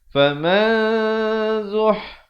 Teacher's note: dibacakan dengan sembunyi ataupun disamarkan bunyi nunnya itu di belakang huruf zai dengan kadar 2 harakat. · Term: ikhfa hakiki